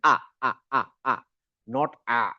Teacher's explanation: গলা ভেঙে না গলা খোলা রেখে একদম আ করে যে আমরা চিল্লাই ওরকম আ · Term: হামজা